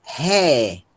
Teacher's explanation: O eta com aspiração forte ó, vai ser pronunciado ré.